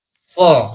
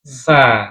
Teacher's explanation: Isti'la itu posisi lidahnya harus naik terangkat. Pangkal lidahnya, bagian dalam lidah, bagian belakang itu harus naik ke langit-langit.